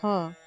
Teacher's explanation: ह संवार नाद घोष महाप्राण है